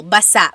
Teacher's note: Emphasis is on the last syllable.